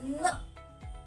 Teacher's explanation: हमारी जुबान हमारे मुंह के ऊपरी वाले हिस्से में गोल घूमकर ऊपरी वाले हिस्से में लगती है तो इसकी आवाज न होती है।